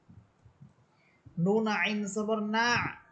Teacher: না আইন আইনের মাখরাজ ছিল কণ্ঠনালীর মধ্যখান নুন আইনকে ধরবে এবং আপনি আইনটাকে কণ্ঠনালীর মধ্যখান থেকে উচ্চারণ করবেন